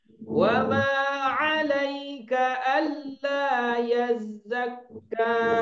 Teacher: tidak ada yang memanjangkan alla karena lam dia tasydid ya. Alla cuma hanya ditekan saja karena tasydid adalah penekanan.